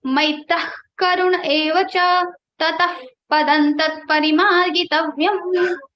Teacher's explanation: just exhale forcefully, get your stomach inside, and then produce the sound of Ka and Pha. It will become K or P like this. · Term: Jivva Mulya Upadmaniya